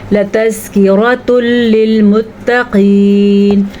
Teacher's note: تنوین کے بعد لام را میں سے لام آ گیا ہے تو یہاں پہ ادغام بلا غنہ ہو جائے گا، نون تنوین بالکل نکل جائے گا اور ملا دیں گے تو پھر ادغام تو ضرور ہوگا لیکن غنے کے بغیر